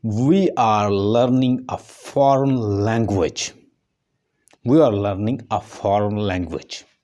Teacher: जो लैंग है LANG जो वर्ड है इसके ऊपर स्ट्रेस है और इसको हम कहेंगे न्यूक्लियस, और न्यूक्लियस को टॉनिक सिलेबल भी कहते हैं।